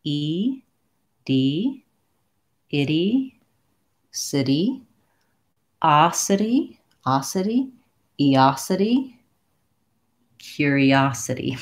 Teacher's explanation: And the challenge here is that I have the lax I followed by the tense E, but neither one is stressed in this case. And my letter T is a flap in this word. So it sounds more like a D.